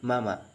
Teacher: the sound m in mama is produced by closing both lips and blowing air through the nose nasal sound